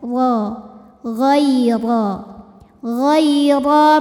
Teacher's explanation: Huruf dibunyikan secara tafkhim karena huruf ro berbaris di atas yaitu fathah. Cara membacanya ditebalkan dengan cara mengangkat pangkal lidah.